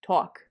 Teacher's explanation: a raised thought vowel, as in water or talk